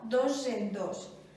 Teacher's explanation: I trobem una altra sonorització en dos, perquè la S, que és sorda, està enmig de dos vocals que són sonores i es sonoritza, i sonaria dos en dos.